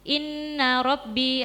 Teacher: ada bacaan gunnah musyaddadah yaitu nun yang bertasydid.